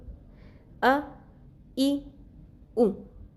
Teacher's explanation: زبان، دانت، تالو، کوئی چیز بھی یوز نہیں ہو رہی، صرف منہ کے خالی حصے سے ادا ہوتا ہے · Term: الف